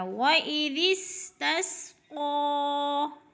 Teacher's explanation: وَإِذِ اسْتَسْقَىٰ، تس کی سین سیٹی سے، قاف پر حروف میں سے ہے، موٹے حروف میں سے ہے، اور اس کے اوپر کھڑی زبر ہے، یعنی کھڑی زبر کو ایک الف کے برابر کھینچ کر پڑھنا ہے